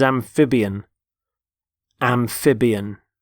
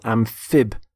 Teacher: Notice the stress on the middle syllable, amphibian.